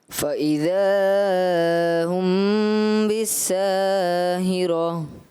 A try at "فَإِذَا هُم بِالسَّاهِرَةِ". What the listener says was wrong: مد اصلی کو آپ نے زیادہ کھینچا، اس وجہ سے 2 جگہوں پہ کھینچا، 2 نمبر آپ کے مائنس کیے جاتے ہیں، 10 میں سے 8 نمبر دی جاتے ہیں.